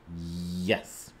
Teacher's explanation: the Y in Y s has the body of your tongue the blade of your tongue really hitting the roof of your mouth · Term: palatal region